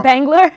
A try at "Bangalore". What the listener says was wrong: When you say, it's the way you say it. It almost sounds like Bangor, like Maine. It's Bangalore, but when you say it fast, you can't help but say it fast, and it sounded like you said Bangor.